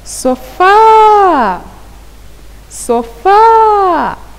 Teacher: A sílaba tônica recai na última sílaba. Logo, quando a sílaba tônica recai na última sílaba, a palavra diz-se aguda.